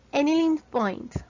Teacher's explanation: cerramos con un sonido más explosivo que el de una T española